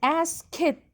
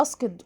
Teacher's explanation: هنا بقى في صوت التي هتبقى ايه؟ صوت voiceless او unvoiced، احبالي صوتيه ما بتتحركش فيه